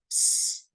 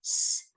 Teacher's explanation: It's completely voiceless. So if you put your hand on your voice box here and you say s, you should not feel vibration